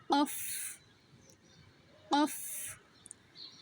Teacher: অফের উচ্চারণটা কণ্ঠনালীর ভেতর থেকে আওয়াজ সহিত বাতাস বের করে উচ্চারণ করতে হবে।